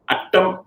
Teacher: There's no contact to the alveolar ridge at all. It's curled back.